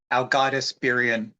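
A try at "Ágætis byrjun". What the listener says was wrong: There's not Algaitis. There's not even an L in there. I don't even know how you're getting that. Is that what the AE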